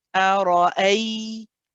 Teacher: And then that hamza is then joined with the ya coming after it, and this ya is a rakhawa letter. So we've got to keep this ya running.